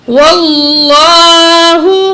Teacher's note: واو کو ہم لام تشدید سے ملائیں گے اور لام کے اوپر کھڑا زبر بھی ہے، ایک الف کے برابر کھینچیں گے. واو زبر لام ول، لام کھڑا زبر لا، ہا پیش ہو، واللہ.